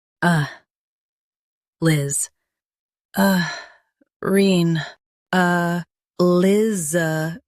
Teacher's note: Stress liz and keep a-rin soft.